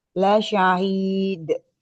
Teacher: La syahid ada qalqalah, ada suara pantulan.